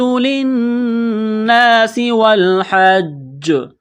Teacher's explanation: یہاں الف سے پہلے زبر ہے، ایک الف کے برابر کھینچیں گے، سین کو باریک کرنا ہے، سیٹی کی آواز پیدا کرنی ہے